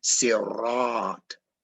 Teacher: To say R, your tongue has to go up to the top palate and it creates a trill, a rotating type of sound, which you can consider to be electric, right?